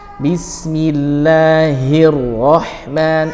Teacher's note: alif lam syamsiyah atau idghamus syamsi ya, idghamus syamsi diidghamkan yaitu dileburkan ke ra, dan ra-nya tebal. Bismillahirrahman, rah huruf H dari tengah tenggorokan sebut dengan waslul halqi, rah, seperti itu ya, bukan roh tapi roh.